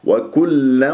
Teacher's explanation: اللام المشددة لا تطيل جريان الصوت فيها لكي لا تصير رخوة ، اللام ليست من صفاتها الرخاوة بل البينية، تقول خطأ وكلا